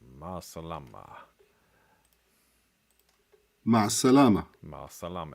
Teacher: It sounds like the e becomes ah here because of the stress before it.